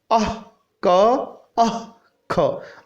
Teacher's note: जिह्वामूलीयस्य जिह्वामूलम, जिह्वामूलीयस्य, जिह्वामूलीय वर्ण कौन से हैं, अह, क, अह, ख, आधे विसर्ग के बाद क और आधे विसर्ग के बाद ख, इनका उच्चारण स्थान जो है वो जिह्वा के मूल भाग से होता है। अर्थात ये हमारी अगर जिह्वा है तो इसका मूल भाग जो होगा यहाँ से इसका उच्चारण होने के कारण इसे जिह्वामूलीय वर्ण कहा जाता है।